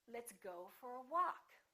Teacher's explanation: go get some stress but walk gets a lot more stress